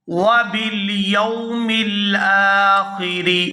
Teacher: یہاں حمزہ کے اوپر کھڑی زبر ہے تو اس کو کھینچ کر ادا کریں گے